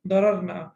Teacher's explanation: Sorry, na shouldn't be prolonged. Dararna. So ra will be, and then the idgham opens.